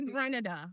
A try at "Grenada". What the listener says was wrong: It's called Grenada, not Granada.